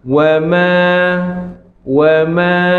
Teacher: Dia hanya rapat ya. Teknikalnya bibir atas bawah melekat ya untuk menghasilkan bunyi huruf mim